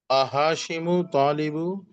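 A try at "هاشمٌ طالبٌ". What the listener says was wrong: वो आ पढ़ने की जरूरत नहीं है, आ को पढ़ना नहीं है, वो तो सिर्फ अलिफ की कैटेगरी में उसको लिखा है। आप सिर्फ सेंटेंस को पढ़िए, नॉर्मल सेंटेंस को।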